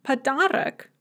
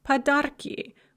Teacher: We drop the o before the ka when we add an ending to the ka.